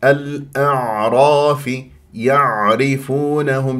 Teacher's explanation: البينيه الاعراف يعرفونهم شوفوا هنا ماذا عندنا العين الساكنه الاعراف يعرفونهم لابد ان تنزل الى وسط الحلق لان العين العربيه الفصيحه عميقه وان تحس بانزعاج في المخرج وكانه عم تبلع شيء وان يجري فيها صوت فتره زمنيه بسيطه لان من احرف التوسط